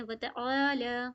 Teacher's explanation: وتعا، عین الف زبر آ، یعنی کہ یہاں پہ کھینچیں گے ہم، پلس عین کی ساؤنڈ کو پراپر عین جیسی پڑھیں گے، الف جیسی نہیں پڑھیں گے، اور حمزہ جیسی نہیں بنائیں گے